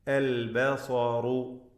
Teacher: സ്വാദ് റാ രണ്ടും തഫ്ഖീം ചെയ്ത് ഉച്ചരിക്കുക